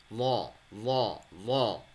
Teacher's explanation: Lot makhrajnya ada di bagian tepi lidah, ya, dibenturkan dengan gigi geraham atas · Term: huruf lot